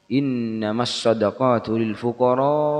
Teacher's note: Rasulullah langsung mengatakan harus dibaca panjang pada lafaz al-fuqara.